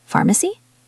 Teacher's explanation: I want you, the listener, to find the difficult word and echo it back to me with a questioning intonation. Your voice needs to go up at the end